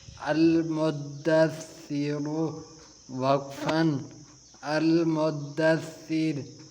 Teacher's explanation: جس طرح ہم دال پر تھوڑا تشدید کریں گے، سختی کریں گے، اسی طرح آگے سا پر بھی سختی کریں گے۔